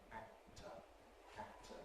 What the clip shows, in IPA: ˈæk̚tə